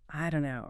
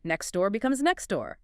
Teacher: The source generalizes this, saying that in American English, if a t sound comes at the end of a word or sometimes in the middle, especially before another consonant or just in fast speech, it often gets totally dropped